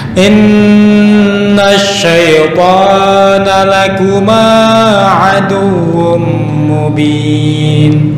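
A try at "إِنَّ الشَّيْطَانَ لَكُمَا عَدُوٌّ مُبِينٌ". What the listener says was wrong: Masih kepanjangan. Mat topi'i hanya dua harokat, enggak bisa lebih, enggak bisa kurang.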